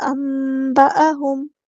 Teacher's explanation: یہاں پر اقلاب ہو رہا ہے، ایسے میم کی آواز ادا کرنی